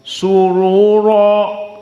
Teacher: Surura tidak ditarqiq. Sama dengan jumhur ditafkhim. Kenapa? Karena sebelum ra dhammah dalam keadaan waw. Surura, maka ru mufakhamah, ra mufakhamah.